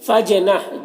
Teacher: جیم میں قلقلہ ہو رہا ہے تو جیم کی آواز میں ایک قسم کی جنبش ہوگی